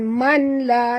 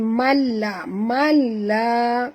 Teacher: Nun mati bertemu lam, ya, kita tidak bunyikan nun ini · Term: idgham bila gunah